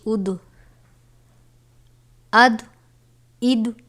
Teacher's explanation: ضاد یہ بھی حروف مستعلیہ میں سے ہے، جس کو پر یعنی موٹا پڑھا جاتا ہے